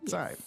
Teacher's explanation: and the first word here was 在, fourth tone